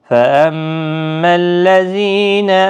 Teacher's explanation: میم مشدد پر غنہ ہوگا، اور باقی کسی بھی حرکت والے حرف کو کھینچنا نہیں ہے۔ · زی یا مدہ ہے، ایک الف کی مقدار کے برابر کھینچ کر پڑھیں